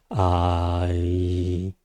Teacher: La E se produce cuando llevamos el sonido desde la A hacia la I. Ay, ¿no? Aparece ahí en el medio una E.